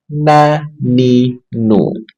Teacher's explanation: nun ujung lidah dengan gusi dua gigi seri atas